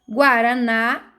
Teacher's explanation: Guaraná, na é uma oxítona, pois a sílaba forte é na